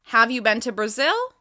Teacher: The rising intonation on the end of the question signals that I need a response.